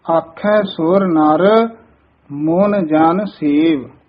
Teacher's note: ਆਖਹਿ ਬੋਲਣਾ ਬਿੰਦੀ ਲਾ ਕੇ ਨੀ ਬੋਲਣਾ